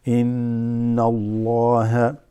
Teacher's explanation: Inna Allah, right? You have a hamza, noon, shad on the noon, so that's ghunna. You hold it. The slight nasal resonation.